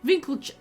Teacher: An emphasis on the first syllable and the end almost like a sneeze.